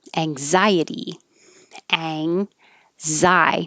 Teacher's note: the letter x sounds like a z anxiety after i had just said that usually the letter x